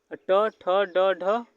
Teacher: जीभ का मध्य भाग, जिसे मूर्धा मतलब तालु के पीछे से स्पर्श करता है